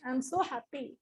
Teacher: When she was being sarcastic, she was being low pitch.